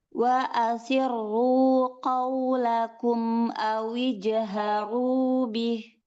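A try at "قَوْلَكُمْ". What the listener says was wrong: Ya, qofnya ini masih ada hamznya, masih ada udaranya. Nanti banyak ditadrib ya, supaya udaranya hilang. Ko, ko, ya, sudah jangan ko, seperti ada udaranya.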